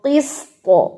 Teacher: تا کو آپ نے ہیوی کر کے چھوڑنا ہے، تا نہیں پڑھنا